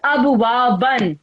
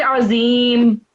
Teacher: However, when this word comes at the end of a verse, right? When you have to stop at the end of the verse, then you would pronounce this word as abwaba, not ban.